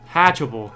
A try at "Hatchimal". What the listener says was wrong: Hatchimal. Hatch-a-mole. No, not hatch-a-bull. Hatch-a-mole. Like hatchy, and then, like, Animal. Like, hatch-a-mole.